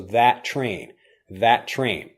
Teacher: You don't have two T sounds. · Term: one sound